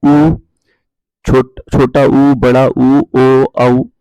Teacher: गोलाकार इसलिए बोलते हैं जिनके इनका यदि हम उच्चारण करें तो होंठ का आकार जो होता है दोस्तों गोल हो जाता है